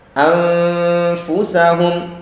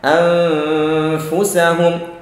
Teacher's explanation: Jadi yang keluar di situ adalah gunnah, suara yang keluar dari hidung.